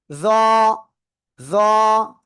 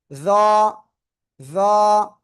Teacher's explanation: জিহ্বার আগা উপরে দুই দাঁতের আগায় লাগিয়ে নরম আওয়াজে, একটু মোটা হতে হবে, মোটা আওয়াজ হতে হবে, মানে নরম নয়, এটা অনেকটাই নরম অনেকটাই মোটা, মধ্যম একটা অক্ষর।